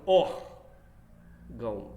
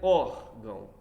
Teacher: O tio é só sinal de nasalização, gente, mais nada. A pronúncia do ão aí sai um pouco pela boca e um pouco pela fossa nasal.